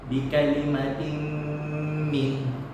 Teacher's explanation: Jadi suara tanwin itu akan masuk kepada huruf mim. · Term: idgham